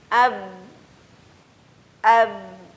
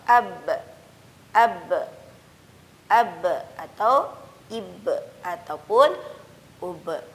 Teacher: Jadi huruf ba senantiasa ketika dia dalam kondisi apapun, harokat fathah, kasrah, dhammah, terlebih pada sukun, maka huruf ba dilafazkan secara memantulkan suara, yakni disebut dengan qalqalah. Contoh ab, ab atau ib ataupun ub dan seterusnya.